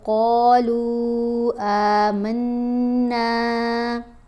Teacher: غنہ آواز ناک میں جاتی ہے اور ایک حرکت کے برابر ٹھہر کر پڑھا جائے گا۔ الف کو کھینچ کر پڑھیں گے، نون کو بھی کھینچ کر پڑھیں گے۔ آمنا، قاف کو موٹا پڑھیں گے اور لام سے ملائیں گے۔